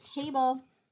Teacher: so both of these had the first syllable as an open syllable with a long vowel